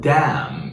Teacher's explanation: You've got m and n at the end, but the n is gone.